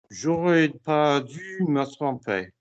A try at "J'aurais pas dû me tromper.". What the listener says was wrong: Me tromper gets a slap. Put your mouth together. J'aurais pas dû me tromper. Teeth together. J'aurais pas dû me tromper.